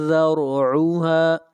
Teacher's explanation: ثم میم کے اوپر شد ہے، غنہ ہوگا، جحیم جحیم، صلو صوت حروف مستعلیہ میں سے ہے، موٹا پڑھیں گے، صلو صلو، ثم الجحیم صلو، ثم الجحیم صلو، ثم میم کے اوپر غنہ، فی سلسلۃ ذرعها، سلسلۃ اخفاء، سلسلۃ ذرعها، یہاں پر را کو موٹا پڑھیں گے، را سے پہلے زبر ہے